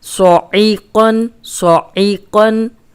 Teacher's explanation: صاد موٹا پڑھنا ہے، عین کو حلق سے نکالنا ہے، قوف کو موٹا پڑھنا ہے.